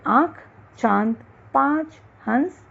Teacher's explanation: इसका उच्चारण नाक तथा मुंह से होता है इसे चंद्र बिंदु भी कहते हैं जैसे आंख दांत पांच हंस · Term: अनुनासिक